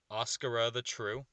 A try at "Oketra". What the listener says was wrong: Oketra. Oketra. No S. No S. Oketra, whatever. There's usually no S.